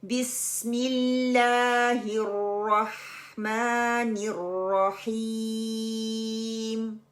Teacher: आपके दोनों दांत जो है आपस में मिले हुए हैं। जुबान आपके दांतो के पीछे है। वहां से विसल की साउंड आ रही है। सीटी की आवाज आ रही है।